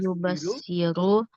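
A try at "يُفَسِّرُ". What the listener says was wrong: tab huruf pa bukan ba. Tab kan pasara. Coba pasara yupassiru.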